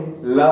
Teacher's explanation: जो वायु होती है वो जिह्वा के दोनों तरफ से गुजर जाती है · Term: पार्श्विक व्यंजन